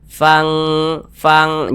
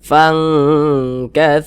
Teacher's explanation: samarkan kemudian juga didengungkan akan tetapi di sini kadar samarnya atau kadar ikhfanya itu dia rendah sehingga kadar dengungnya dia yang lebih tinggi sehingga dia lebih condong berbunyi Eng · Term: ikhfa Hakiki ab'ad